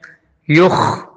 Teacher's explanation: یخ میں خا کو حلق میں خراج کے ساتھ پڑھنا ہوگا